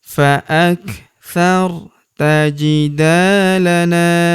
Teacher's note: Huruf na kita panjangkan dua harakat karena terdapat tanda alif di depannya